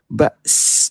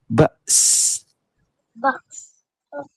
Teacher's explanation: Sebut Hamzah dulu, baru sin mati.